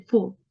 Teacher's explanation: This sounds labiodental, which means that we use our teeth and the lips to articulate this sound. You can try when you say the sound, you need to touch your teeth to your lip.